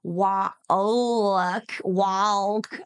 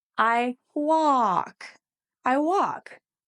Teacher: you don't hear the L. You just hear a I walk.